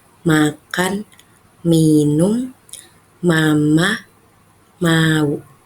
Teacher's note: bertemunya bibir atas dan bibir bawah. M contohnya pada kata makan minum mama mau. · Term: Huruf M